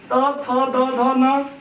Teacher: त, थ, द, ध, न दंत का प्रयोग करके बोला जाता है